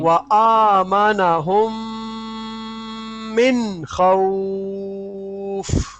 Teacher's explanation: اب یہاں پہ جو ہے دیکھو ایک لال ہے بس، میم، میم کے بعد میم جی آیا تو یہاں پر غنہ کر کے پڑھیں گے، نون میں غنہ نہیں ہوگا